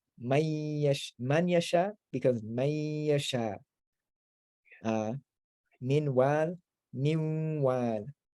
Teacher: The noon merges into the ya or the wa, and it's nasalized.